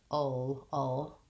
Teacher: We have a dark L at the end of the word, and that means that I'm not lifting my whole tongue. The back of my tongue is staying more in the schwa position.